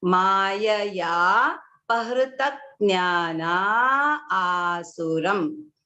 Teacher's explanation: you can see how the visarga just disappears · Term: visarga sandhi